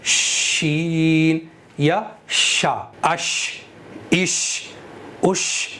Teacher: शीन के अंदर मुस्तफ़ीला की सिफ़त है, यानी बारीक पढ़ा जाएगा